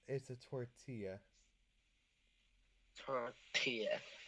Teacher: so you don't pronounce the L's. It's gonna be tortilla with like a Y.